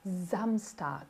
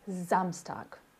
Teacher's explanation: Som de Z para esse S inicial, Samstag. Nada de nasalização, Zan, não, nada de Zan.